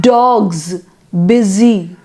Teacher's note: we have S, but the sound is not S, it is Z, Z, dogs, busy.